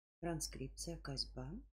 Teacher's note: Буква «С», звук «З», Согласный, звонкий, парный, мягкий, парный.